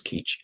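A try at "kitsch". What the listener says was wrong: Now you're pronouncing Kitsh as Keach.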